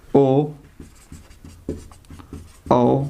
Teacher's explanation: जिन स्वरों का उच्चारण जीभ के पिछले हिस्से से जीभ के पिछले वाले भाग से होता है वह पक्ष स्वर कहलाते हैं